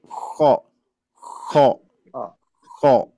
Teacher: tanpa ada getaran dienggorokan